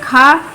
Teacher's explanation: कंठ है, स्पर्श है, आघोष है, और लेकिन ये क्या है? महाप्राण है